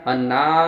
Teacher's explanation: النون پر اگر تشدید ہو تو غنہ ہوتا ہے تو یہاں آواز کو ایک الف کے برابر ناک میں روکنا ہے